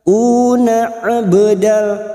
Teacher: Una abdal huruf ain ba sukun qalqalah sugro yang mati asli di tengah kalimat. Jangan lupa dipantulkan, namanya qalqalah sugro.